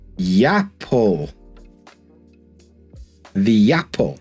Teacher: when we have a smile vowel at the end of a word and the next word starts with a vowel, we're going to link them together. So here, we're going to add a Y. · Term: smile vowels